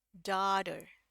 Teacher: t-nya itu enggak tebal kayak t gitu tapi cuman kayak lidahnya nempel aja ke atas sepintas ya atau ngucapin huruf the tapi yang ini cuman sepintas aja naik ke langit-langitnya nyentuh ke langit-langitnya itu lidah kita hanya sepintas deh gitu ya. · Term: flap d